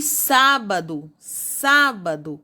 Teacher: ser um acento circunflexo termina com então acentuado e sábado sábado a antepenúltima sílaba é tônica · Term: proparoxítona